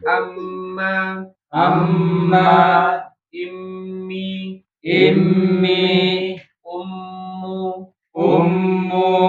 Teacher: Sekarang huruf mim. Nah, sama huruf mim juga kalau dia bertasydid tahan sebagaimana huruf nun ya. E tahan yang lama dua harakat